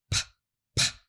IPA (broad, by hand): p